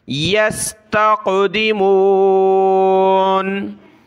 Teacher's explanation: यस्तक़ ता क़ाफ ज़बर तक़, क़ाफ पर क़लक़ला किया। यस्तक़दिमून।